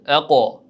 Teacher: Ya'ni ingichka tebratib qo'ymang, balkim qof harfi yo'g'on talaffuz bo'ladigan harf, shu sababli ham tebranish ham yo'g'onroq bo'ladi. Aqo. Mana shu holatda tebratasiz.